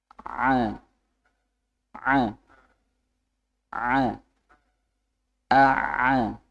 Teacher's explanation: Ain itu enggak sampai menutup sempurna · kalau a ya dari pita suara dari bawah sendiri kalau Ain itu dari katup nafasnya